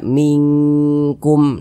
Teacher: kadar ikhfanya itu dia rendah Jadi dia lebih tinggi kadar dengungnya sehingga lebih condong berbunyi Eng kita baca mingkum nah begitu suaranya itu kita tahan kita panjangkan · Akan tetapi dia kadar samarnya atau kadar ikhfanya itu, kalau pada ikhfa hakiki ab'ad itu kadar ikhfanya itu dia rendah. Nah, jadi dia lebih tinggi kadar dengungnya sehingga lebih condong berbunyi eng.